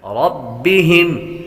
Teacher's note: را پر زبر و را کو پر پڑھتے ہیں